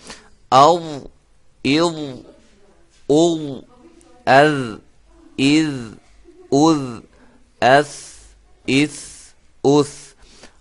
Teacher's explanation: زبان کی نوک اوپر سامنے والے دو دانتوں کے کنارے سے ادا ہوتے ہیں